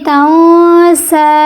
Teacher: تغو، تنسا، اب تنسا نہیں پڑھیں گے، یہ نون کا قاعدہ ہے کہ نون ساکن نون تنوین کے بعد حروف ہلکی میں سے کوئی حرف نہ آئے تو وہاں اخفا کیا جائے گا، نون کی آواز کو ناک میں چھپا کر پڑھیں گے